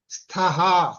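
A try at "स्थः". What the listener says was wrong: స్థః ఆ రెండో థ రావాలి ఇక్కడ. అది ఇక్కడ భవంతౌ అన్న దగ్గర ఇక్కడ స్థః, ఇది ఉత్తిత, ఇది స్థః, ఇది మధ్యమ పురుష కనుక అది తేడా. అంటే మీకు అర్థమైంది, నాకు తెలుసును ఉచ్చారణ. అది మనకి ఎదురువాడికి అర్థం అవ్వాలి, మనం కరెక్ట్ చెప్తున్నామని.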